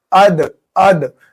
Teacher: ہم نے پچھلے اسباق میں بتایا تھا یہ جو سامنے والے دو دانت ہوتے ہیں ان کو ثنایا علیہ کہتے ہیں، اوپر والے یہ، اور یہ جو نیچے والے دو دانت ہوتے ہیں یہ سامنے والے، ان کو ثنایا سفلا کہتے ہیں۔ تو جب ہم زبان کی نوک ثنایا علیہ کی جڑ میں لگائیں گے اندر ادھر، تو ہمارا یہ دال ادا ہوگا۔